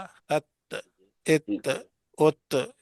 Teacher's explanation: اور یہ تا دیکھو تا ات ات ات باریک بھی ہے اور بغیر جھٹکے والی ہے